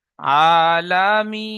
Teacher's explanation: ইয়া সাকিনের ডানদিকে জের এসেছে একে ইয়া মাদ্দা বলে ইয়ামাদ্দায় এক আলিফ পরিমাণ টান দিয়ে পড়তে হয়